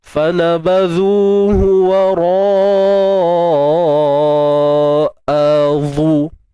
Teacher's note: turun dengan bunyi yang nipis pada hamzah lah